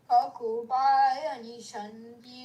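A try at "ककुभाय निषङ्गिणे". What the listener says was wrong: No, now you're rushing. I will tell you how you're chanting. Kakobhaya nishangine. Is that the way I'm teaching? I'm not. So, kakobhaya nishangine. Nishangine.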